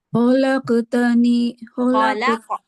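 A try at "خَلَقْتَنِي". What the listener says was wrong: Kholak harus tebal, jangan jangan kayak gitu. Khalaqtani tebal.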